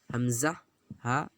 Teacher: یعنی شروع حلق سے حمزہ ہا ادا ہوتا ہے۔ یہ دونوں مخرج آسان ہے، حمزہ ہا، اس کو بولنے میں پیشٹی کرنے کی اتنی ضرورت نہیں پڑے گی۔